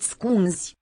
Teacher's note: Z is just a voiced fricative.